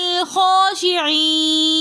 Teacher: درمیان میں حمزۃ الوصل ہے جو درمیانی کلام میں آنے کی وجہ سے گر جائے گا. خا کے اوپر کھڑا زبر ہے تو اس لیے اس کو ایک الف کی مقدار کھینچ کر پڑھیں گے · علی الخاشعین میں لام کو ہم دوسرے لام کے ساتھ ملا کر پڑھیں گے. درمیان میں حمزۃ الوصل ہے جو درمیانی کلام میں آنے کی وجہ سے گر جائے گا.